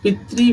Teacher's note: पितरी में री की मात्रा है तो पी पर बलाघात है